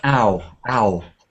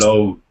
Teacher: you need to get it a little bit more open, like ow, ow